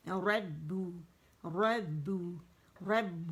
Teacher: پہلے با کے مخرج پہ جائیں گے, دونوں ہونٹوں کو سختی سے آپس میں جوڑیں گے اور پھر اسے ہم پیش دیں گے. تو کیسے کریں گے, رب رب رب, بو نہیں, موٹا نہیں کریں گے, با باریک ہے, رب رب.